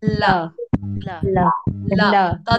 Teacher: thì đầu lưỡi lên chân răng giống hệt vị trí lưỡi của âm t